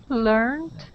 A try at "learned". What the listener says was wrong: Now, with these words, you're pronouncing a T at the end, saying learnt and explained. we're gonna practice that D sound. D, D. D, D.